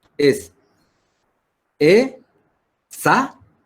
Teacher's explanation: ¿Dónde se carga la voz? En la penúltima sílaba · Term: palabra llana